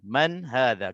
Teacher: Maknanya baca tanpa dengung, nun mati bertemu dengan ha. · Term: izhar halqi